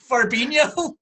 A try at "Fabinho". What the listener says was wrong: There's no R. There is no R in it. Fabinho.